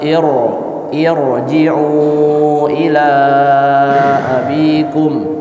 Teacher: karena kasrahnya ini adalah kasrahnya hamzah wasal, jadi dibaca tebal.